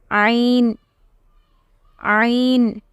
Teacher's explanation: What is the articulation point? It is the middle throat.